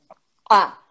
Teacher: começa um som pela boca e não pelo nariz o músculo vai subir rapidamente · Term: som brusco